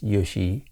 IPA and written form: uʃɪ: (Uši)